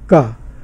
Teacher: लेकिन व्यंजनों के उच्चारण में कहीं ना कहीं रुकावट या कंस्ट्रिक्शन, संघर्षण इस तरह की, जैसे का, तो का में जीभ का पिछला भाग जो है वो जो कंठ स्थान पर वहाँ पर जाके थोड़ा सा टच करता है